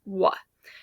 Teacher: The W sound is voiced because it is a glide sound. When you produce the W sound, your vocal folds are vibrating as the air flows through them. Both glide sounds, W and Y, are voiced sounds. · The W sound is a voiced labial velar approximant, which means it uses both the lips labial and velum velar for production. The production starts with sufficient respiration and the generation of airflow through the lungs. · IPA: /w/